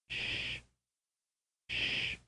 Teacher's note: air passes through the constricted opening